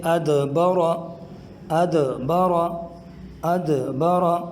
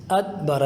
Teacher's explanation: اگر ہم اس کو یوں پڑھیں گے، دیکھیں ادبرا، یعنی اس میں اگر قلقلہ نہیں کریں گے تو یہ دال یہ تا سے تبدیل ہو جائے گا